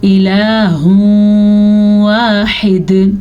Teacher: جیم پہ وقف کرنا جائز ہے، تو پھر ہم جب وقف کریں گے تو دال ساکن ہو جائے گی، ساکن دال پہ تو قلقلہ بھی ہوتا ہے، یعنی کہ ساکن دال جھٹکے سے پڑھی جاتی ہے، اور ہا کے تلفظ کو آپ نے درست طریقے سے نکالنا ہے، اس کو ہا یا خوا پڑھنے کی غلطی نہیں کرنی۔